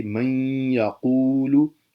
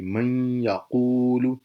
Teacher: متقاربین، جب دو قریب المخرج حروف اکٹھے آ جائیں، پہلا ساکن اور دوسرا متحرک ہو تو ادغام متقاربین ہوگا، جیسے من یقول۔ نون اور یا دونوں قریب المخرج ہیں، پہلا ساکن دوسرا متحرک تو پہلے کو دوسرے میں ضم کر دیں گے،